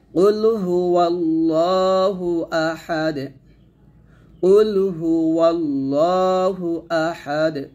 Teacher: এখানে ওয়াল্লা না বলে ওয়াল্লাহ বলবে, লামটা মোটা হবে।